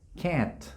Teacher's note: cuando pronunciamos esta vocal los labios se hacen un poquitito hacia atrás